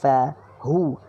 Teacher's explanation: Ha ketawa, baris depan hu, muncungkan mulut.